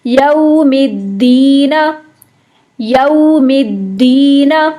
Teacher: یو مکمل ہونٹ گول کر کے پڑھیں گے، یو نہیں پڑھیے گا اس کو.